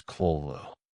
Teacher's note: The first syllable guttural almost coughed. The second a long vowel rising.